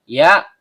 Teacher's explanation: tengah lidah naik memantul ke langit-langit